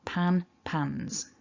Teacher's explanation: the plural, although it looks like an S, is a Z sound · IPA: /nz/